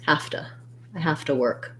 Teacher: These link, and my V actually turns into an F.